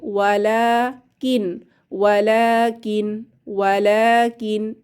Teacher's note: লা তে আলিফ সগিরা এক আলিফ টেনে পড়বো